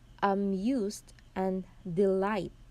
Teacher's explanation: both word amuse and delight, the stress is on the second syllables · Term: iamb